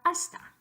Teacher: It is not a voiced consonant. So your phoneme S is going to stay the unvoiced or voiceless version of S.